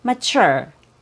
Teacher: Sometimes the T or the consonant T has a CH sound, like in the word mature.